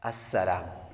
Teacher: یہاں پر سین حروف صفیرہ میں سے ہے، سیٹی کی آواز آئے گی، آگے لام باریک ہے